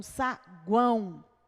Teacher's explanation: o U é semivogal, o A vogal e o O semivogal, porque ele tem som de U, ele tem que ter som de U. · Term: tritongo